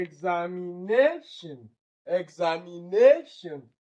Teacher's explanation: the penultimate syllable which is the NA that is the stressed part